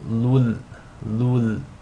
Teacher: You want to assimilate the Tanween into the Lam without any nasal sound. So it's as if the Tanween is dropped and you're just saying lul, lul. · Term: Idgham bila ghunna